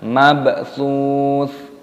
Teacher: Di sini ada ba yang berharokat sukun, ini dikolkolah, dipantulkan suaranya